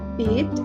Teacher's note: the word beat is on the front area of the tongue and the height of the tongue is high